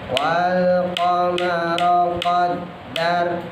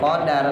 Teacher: dalnya ada tasdidnya, pantulannya ya, jangan dipantulin. Wal qamara qaddar, bukan qadar.